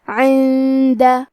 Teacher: خیر عند، کلمت عند میں نون ساکن ہے، پھر حرف الدال ہے، کیونکہ دال حروف الاخفاء میں سے ہے تو ہم یہ حکمے کو غنہ کے ساتھ ادا کریں گے